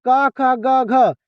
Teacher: और क, ख, ग, घ किससे बोले जाते हैं? तो कंठ से।